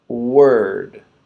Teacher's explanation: So we're not ending with the back of our mouth and the back of our tongue. We're ending it with the top of our mouth and the front of our tongue. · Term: D ending sound